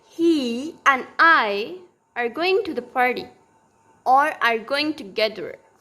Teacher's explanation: These words are prominent. Going is prominent. Together is prominent. This are and this and is not prominent. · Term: stressed ones